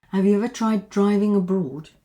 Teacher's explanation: we have two Ds here, so that becomes one.